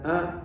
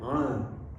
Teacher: Hamzah di tenggorokan paling bawah, ain di tengah.